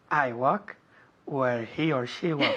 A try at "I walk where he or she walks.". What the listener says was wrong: Muy bien, me da igual, pero la S es lo más importante.